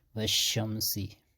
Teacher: شین میں ایک صفت ہیں، صفت تفشی جس کو ہم کہتے ہیں، اسپریڈ، پھیلنا، آواز کا منہ میں پھیلنا